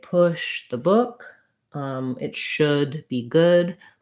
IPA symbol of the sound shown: ʊ